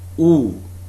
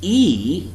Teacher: compare this sound with e which is also long while sound it is not rounded you can see your lips spread